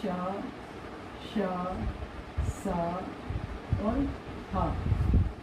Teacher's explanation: वायु मुख के किसी न किसी भाग से रगड़ खाकर बाहर निकलती है। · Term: घर्षण